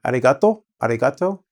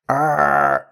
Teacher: their tongue is at the front of the mouth. Well, in English: arr is in the back. We curl our tongue.